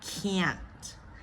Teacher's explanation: You can if it helps you make the speech sound clear, so you can say can't, or you just stop that T in the roof of your mouth because it is a stop T